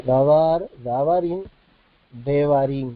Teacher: Si queremos hacer el plural, davar, tenemos que agregar el im, siempre el sufijo que le agregamos arrastra el acento, y eso es lo que hace que se produzca un cambio en la vocalización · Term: reducción vocálica